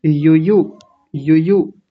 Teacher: दोनों य पर छोटे ऊ की मात्राएं हैं। तो जल्दी-जल्दी बोलेंगे